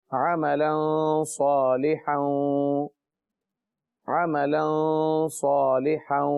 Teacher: غنہ ہو رہا ہے عملا، کیونکہ آگے صاد ہے جو حروف اخفا میں سے ہے